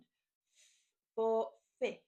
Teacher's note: this is another voiceless sound. So no voice, just air, and that makes the F sound.